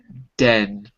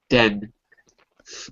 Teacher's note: My tongue is behind my teeth, hair touching the alveolar ridge, the little bump behind your teeth.